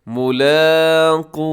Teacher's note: آخر میں جو واو مدہ ہے تھوڑا لمبا کیجیے گا